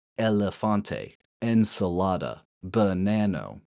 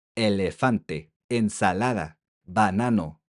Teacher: All five vowels come out crisp, stable, clear, and they never downgrade into a lazy schwa as often happens in English. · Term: crisp, sharp, and clear